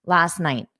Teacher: I didn't push out the sound, but because it's a period and I'm forced to take a pause anyway, you can say last night, last night. You can pronounce that T because you're already taking a pause